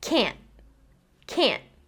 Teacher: can't in fast speech will kind of just sound like can, because that final t is not fully produced, right? It's only halfway being pronounced.